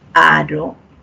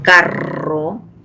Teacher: Al producir nos vamos a dar cuenta que hay aro, esa vibración es simple, mientras que en carro ahí hay una vibración múltiple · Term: vibrante simple